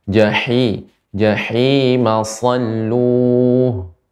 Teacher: Ha ini tengah tenggorokan makhrajnya